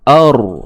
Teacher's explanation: Sekarang kita tengok ada hamzah yang berbaris atas, maka ra ini automatik kena baca dengan tebal.